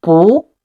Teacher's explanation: When bu is followed by a syllable in the fourth tone, it changes into the second tone